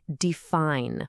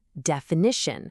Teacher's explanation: We all say define with that long i sound, but add an ending and it becomes definition. The i is totally gone, and it's replaced by a short i sound.